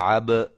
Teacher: یہ با کو ہلانا ہے کیونکہ یہ حروف قلقلہ میں سے ہے